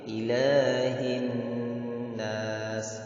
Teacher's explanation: Dan jangan lupa itu ada sifat hamas. Jadi sifat hamas itu adalah adanya inhiraf. Jadi ada mengalir sedikit. Jangan berhenti mendadak. Ilahin nas, jangan langsung, tapi ilahin nas.